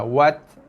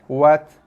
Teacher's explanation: Hujung lidah tekan belakang gigi. Tekan, lepaskan tekanan berserta sedikit hembusan nafas yang keluar. Wat. Ada bunyi hembusan nafas sikit Wat. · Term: ta mati